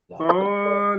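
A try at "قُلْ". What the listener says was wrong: এখন কিন্তু কলা বললে হবে না, ও, ও, কলা।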